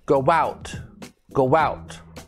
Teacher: sounds like we're putting a w in between the two o's